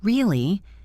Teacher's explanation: But if I say really with a high pitch at the end, it means I am surprised. Or if I say really with a low flat tone, it might mean I do not believe you or I am disappointed